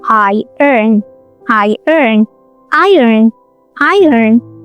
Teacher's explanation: A lot of people say iron because of the spelling, but in real life the O disappears and it's just two beats